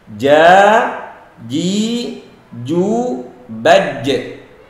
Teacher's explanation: Perhatikan, ada qalqalah dan tidak ada desis. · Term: huruf ja